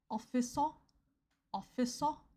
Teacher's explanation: with Korean pronunciation, you emphasize the first syllable.